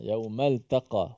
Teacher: walaupun ta dengan qaf ini huruf pada perkataan yang berjiran, tetapi ta tu hukumnya nipis. Tak boleh kerana qaf itu tebal. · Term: Ta nipis